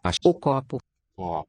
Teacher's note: the tonic accent falls on that ko. That's a recognizable O. The other ones sound more like an oo. We say they get raised because of the jaw height.